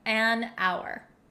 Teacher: we totally get rid of the H sound and that's why we say an hour